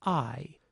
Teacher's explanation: So you can have a syllable that is nothing more than a vowel. No onset, no coda, just a nucleus. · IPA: [aɪ]